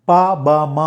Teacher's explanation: పెదాలు టచ్ అవుతేనే వస్తాయి, ఇంకా వేరే మార్గమే లేదు.